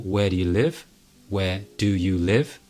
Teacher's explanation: where and live are both emphasized are both stressed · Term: content words